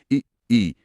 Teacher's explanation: आप बोलकर महसूस कर सकते हैं, ई जीभ का अगला हिस्सा, मतलब नोक के पास वाला हिस्सा ज्यादा सक्रिय है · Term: अग्र स्वर